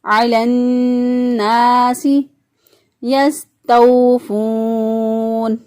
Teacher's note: سین جو ہے اس کی ادائیگی میں سیٹی جیسی آواز آنی چاہیے